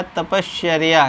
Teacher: यानी ये विसर्ग देखिए किस में कन्वर्ट हो गया, यानी यही विसर्ग, बाकी कोई चेंजिंग नहीं हुई, ये चर्या ऐसे ही रहेगा। यही विसर्ग किस में बदल जाएगा? तालव्य श में बदल जाएगा।